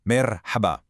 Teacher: that seven sound is a breathy sound, deep from your throat